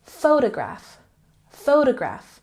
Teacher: Photograph has the emphasis on the first syllable.